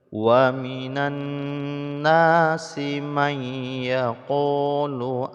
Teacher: nun sukun bertemu dengan ya, hukumnya idgham bi gunnah, yaitu memasukkan bunyi nun ke dalam huruf ya, maka nun sukunnya tidak lagi dibaca tapi langsung pada tasydid ya, kemudian digunnahkan didengungkan.